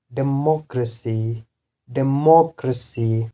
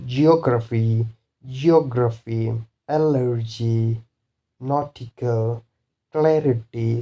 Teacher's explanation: the stress will be on third last syllable